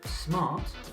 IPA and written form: smɑːt (Smart)